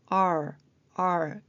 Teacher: R일 때는 혀가 입천장에 닿지 않죠.